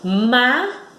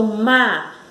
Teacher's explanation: Na palavra mágico, olha só, mágico. Então, a sílaba mais forte, ela dá um impulso, ela sobe.